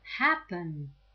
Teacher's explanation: happen has the stress on the first syllable, right? So we don't double the last consonant.